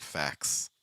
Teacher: there are plenty of native speakers that don't do that CT and instead pronounce it as a KS